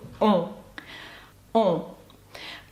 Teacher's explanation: Ви маєте відчути, як повітря виходить з носу. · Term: Носовий звук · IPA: [ɔ̃]